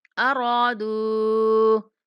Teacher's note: را کو 1 سیکنڈ تک کھینچیں گے اور دال کو 3 سیکنڈ تک لمبا کرنا ہے۔ یہ دال کے اوپر آپ کو مد نظر آ رہی ہوگی چھوٹی سی، تو اس کو ہم نے 3 سیکنڈ تک لمبا کرنا ہے۔